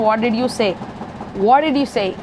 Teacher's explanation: the biggest stress will be on what and say